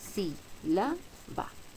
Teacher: La antepenúltima sílaba es la que lleva el acento, por tanto debe llevar tilde. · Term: esdrújula